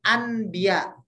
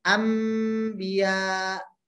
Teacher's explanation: Nun mati atau tanwin bertemu dengan huruf ba. Kita gantikan atau kita substitusi huruf nun matinya dengan huruf mim ya, sehingga kita bacanya bukan anbiya tapi kita bacanya ambiya jadi m, kira-kira seperti itu. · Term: iklab